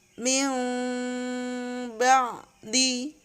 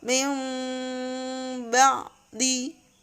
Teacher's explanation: Cara membacanya adalah ketika ada nun sukun atau tanwin menjadi bunyi huruf mim dengan cara mendengung